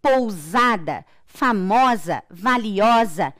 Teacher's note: Eu não tenho o som do S. Eu tenho o S com o som de Z.